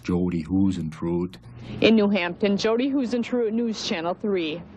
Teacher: She had a little bit of a Minnesota accent with the long vowels